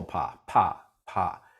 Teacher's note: there's no vibration for a little while after my lips part okay my little vocal cords are kind of separated from each · each other and so air can get through them and so when my lips part you can feel that puff of air on your hand